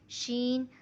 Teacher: شین، شین جو جیم کا مخرج ہے وہی شین کا بھی مخرج ہے۔ شین، زبان کی دائیں بائیں کروٹ اوپر داڑوں سے لگائیں تو حرف شین ادا ہوتا ہے